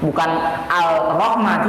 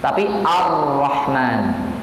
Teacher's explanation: walaupun ada tulisan lamnya, tetapi tidak ada dalam suaranya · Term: alif lam syamsiyah